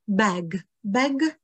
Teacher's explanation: obsahuje to vlastně takovou tu širokou hlásku e, kterou my u nás doma nemáme